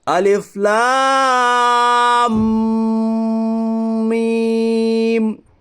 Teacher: حرف مقطعات میں حرف مد کے بعد سکون اصلی ہے، اس لیے مد لازم حرف مخفف ہوگا. مد لازم حرف مخفف کو 5 الف کے برابر کھینچ کر پڑھیے